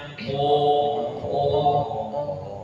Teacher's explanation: tempat keluarnya qaf itu lisan, dalam arti lebih detailnya pangkal lidah bagian belakang paling belakang menyentuh ke langit ya. Bunyinya ko.